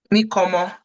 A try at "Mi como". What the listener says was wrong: So now you see the way you're sounding. That's the way you're sounding. Now, you are speaking English. Because in English, there is nothing like mo. You guys don't sound like that. You sound more like orange. The long O vowel.